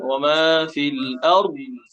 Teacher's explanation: দদে বাতাসও বের হবে না, কলকলাও হবে না, শুধু আওয়াজটা হবে।